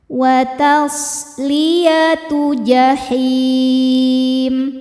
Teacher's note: namanya sifat shofir yang artinya berdesis.